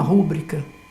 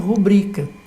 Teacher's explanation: Mas esta faz a opção exatamente pelo mais difícil, que é transformar uma palavra que nós chamamos de paroxítona em proparoxítona. Traz o acento para a primeira sílaba dela. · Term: deslocar o acento